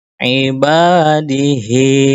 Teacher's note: Contoh berikutnya kasrah berdiri ibadihi sama dua harakat juga diayun.